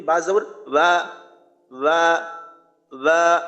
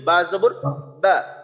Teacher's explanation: ঠোঁটের সাথে ঠোঁট রাখার ক্ষেত্রে আমি শক্তভাবে রাখলাম না নরম ভাবে রেখে বললাম বা জবর বা নরম হইলো আওয়াজটা